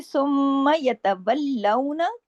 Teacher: سختی سے جوڑنا ہے تشدید کی وجہ سے. میم پہ تشدید ہے، غنہ ہوگا